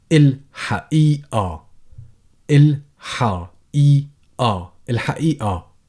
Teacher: in dialect people would replace the qaf with a glottal stop, so it becomes الحقيقة.